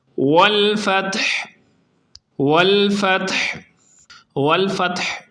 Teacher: والفتح، والفتح، والفتح میں آخر پہ وقف کی وجہ سے سکون آ گیا ہے، لیکن ہا کو حلق کے درمیان والے حصے سے نکال کر صحیح انداز میں پڑھیں گے۔ اکثر لوگ یہاں پر ہا کو صحیح نہیں پڑھتے۔